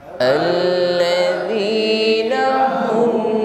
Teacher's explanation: Lam tasydid ditekan, nampak sifatnya tawassut, bukan alladzi. Mengalirkan saja ya.